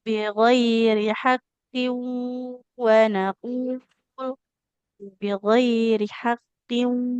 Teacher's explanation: apabila kita bertemu tanwin berhadapan dengan huruf waw. Jadi ditahan dulu di waw. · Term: idgham bighunna